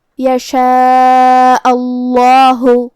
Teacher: یہاں لفظ الجلالہ کا حکم ہے تفخیم، مطلب ہمیں اسے بھاری آواز میں پڑھنا ہے